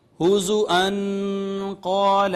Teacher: نون تنوین کے بعد حرف اخفا آ گیا، لہٰذا یہاں پہ ہم نے آواز کو چھپایا، اخفا کیا